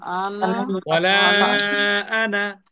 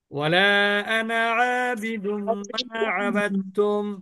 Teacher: কোরআনে যত জায়গায় আনা আছে, কোন জায়গায় আনা কিন্তু টানা হবে না, বাদ হবে না।